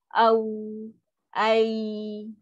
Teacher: Boleh dipanjangkan dengan lembut tanpa sekatan. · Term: huruf lin